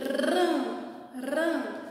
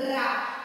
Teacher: O R que treme com A faz Rá. Mas não é Rá. Eu quero Ram. Então, para fazer Ram, eu tenho que colocar o quê? O ajudante N. Porque o som vai sair pelo nariz.